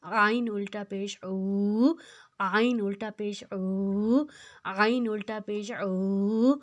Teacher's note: عین جو ہے حروف ہلکی ہے، اس کو حلق سے نکالنا ہے۔